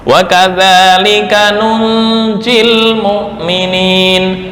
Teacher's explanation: Coba ketika wasal ya, bacaannya itu dihapus huruf terakhir. Nunjil ya dihapus ketika wasal.